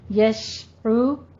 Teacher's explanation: عین کو وسط حلق سے ادا کیجیے اور دونوں ہونٹوں کو گول کریں